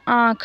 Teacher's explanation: उच्चारण में कुछ हवा मुख कुछ नाक से निकलती है उन्हें अनुनासिक स्वर कहते हैं